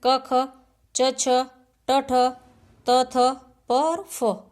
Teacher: दूसरा है अघोष। वे वर्ण जिनके उच्चारण में गूंज, नाद, कंपन नहीं होता है